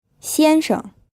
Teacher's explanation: the first syllable is in the first tone and the second syllable is unstressed